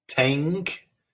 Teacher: that's the n g sound before the k